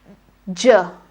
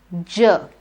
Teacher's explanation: the teeth ridge it becomes ja let's say ja together so the three features of ja are first it is voiced then it is an affricate and also you need to place your tongue on the teeth ridge